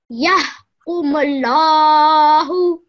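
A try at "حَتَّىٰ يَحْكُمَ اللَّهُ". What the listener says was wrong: Excellent. Let's do that one more time.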